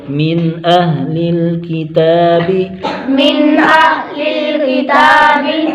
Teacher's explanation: اہل الکتاب، تا پر کھڑا زبر، ایک الف کھینچے گے